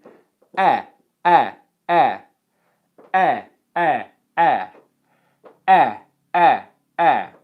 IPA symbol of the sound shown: eɪ